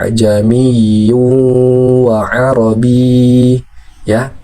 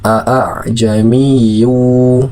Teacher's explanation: Di sini ada latihan hukum tashil, yaitu kondisi membaca huruf hamzah yang keduanya diringankan setelah huruf hamzah yang pertama